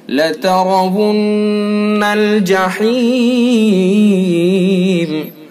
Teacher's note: لترون الجحیم، لتر، را کو پر کریں گے چونکہ را کے اوپر زبر ہے، اور نون مشدد ہے، اس کے اندر غنہ کریں گے، ایک الف کے برابر ناک میں آواز لے جائیں گے